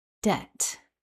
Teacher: hopefully you noticed that we don't pronounce the letter B in this word. It is a silent letter in debt.